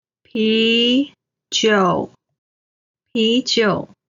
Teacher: 啤 is the second tone. 酒 is the third tone.